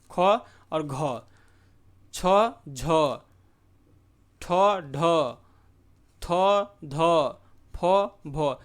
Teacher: उच्चारण में श्वास का अधिक मात्रा में निकलना, जो हकार की ध्वनि उत्पन्न होता है। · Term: महाप्राण व्यंजन